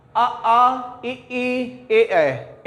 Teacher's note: और इसके बाद अवृत्तमुखी में क्या आ जाएगा, आ इ ई ए ऐ। इनका उच्चारण करने में हमारा ओष्ठ जो है वृत्ताकार नहीं बनता